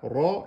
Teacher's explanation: On met le ra emphatique, parce qu'il porte une fatha. Ra et pas re, ra.